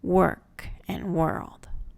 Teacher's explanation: And WOR words, the OR will instead say ER, as in work and world.